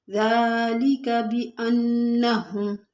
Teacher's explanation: दाल के ऊपर खड़ा ज़बर है, थोड़ा सा खींचेंगे।